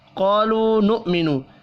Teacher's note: الف مدہ اور واو مدہ یہاں بھی ایک ایک الف کے برابر کھینچ کر پڑھے جائیں گے۔ قاف حروف مستعلیہ ہے، پر پڑھیں گے۔